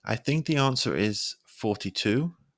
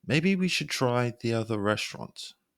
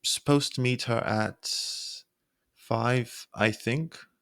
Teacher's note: using a rising pitch makes it clear that the speaker isn't totally sure.